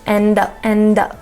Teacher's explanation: the D is going to connect right into the up sound